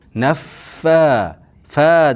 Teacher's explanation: Naffa fa deganda ikki harakat miqdor cho'zamiz. F ham ikki harakat miqdor cho'zamiz.